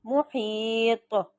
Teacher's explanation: اب طا موٹا بھی، طا پہ قلقلہ بھی